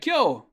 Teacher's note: notice how we do have a K followed directly by a Y sound